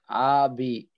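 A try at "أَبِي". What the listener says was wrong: আপনার, হুম, আচ্ছা, এখানেও এই যেমন বিতে টান, আতে কিন্তু টান নেই। আবি না বলে আবি, আবি।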